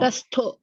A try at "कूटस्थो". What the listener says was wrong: The ta only. This is alpa pranam only. Kuta, kutasto. Yes, don't stress here. Only here. Ta only.